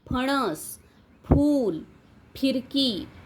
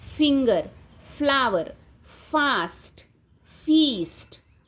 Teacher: मराठीमध्ये फ चा उच्चार जो आहे ना तो दोन्ही ओठांचा वापर करून केला जातो · पण इंग्लिशमध्ये फचा वापर जो आहे, फ हे जे आहे ते फ आहे. बायलेबियल, ओठ आणि दात याचा वापर करून केला जातो. फिंगर, फ्लावर, फास्ट, फीस्ट, या पद्धतीने फूट असे उच्चार केले जातात.